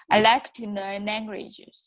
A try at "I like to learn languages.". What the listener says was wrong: Yeah. You see how you're it's perfectly formed, perfectly sounded.